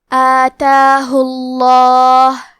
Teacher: ہمیں لفظ الجلالہ مطلب کلمت اللہ کے لام کو تفخیم سے مطلب موٹی آواز میں پڑھنا ہے